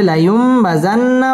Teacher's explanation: আলিফ মদের হরফ এক আলিফ টেনে পড়তে হবে কাল্লা লা ইউম নুন সাকিনের বামে বা আসছে ইকলাব মিম দ্বারা পরিবর্তন করে পড়তে হবে